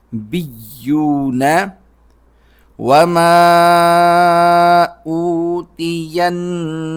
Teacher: جب سٹاپ کریں گے تو واو پر مد کریں گے، سیکنڈ لاسٹ نمبر پر واو ہے تو نبیون اس طرح بولا جائے گا۔